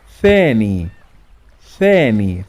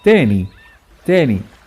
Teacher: in Masri, ثاء is not pronounced with the tongue out. Usually majority of the words that they have ثاء in Masri will be pronounced as تاء, as the previous letter.